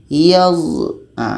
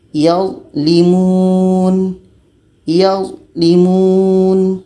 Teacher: Karena za ini sifatnya jahar, tertahan anginnya.